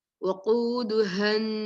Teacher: وقاف, you should pronounce properly. وقودها ha from the throat